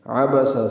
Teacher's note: عبس سب زبریں ہیں، عین وسط حلق سے ادا ہوگا